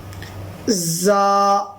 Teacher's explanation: زا کے اندر دونوں دانت ملتے ہیں اوپر اور نیچے والے، اور ہلکی سی آواز آتی ہے